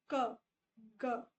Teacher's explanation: back of tongue and soft palate, अब यहाँ पे जब आप क बोलते हो तो यू विल सेंस कि आपकी आवाज बहुत पीछे से आती है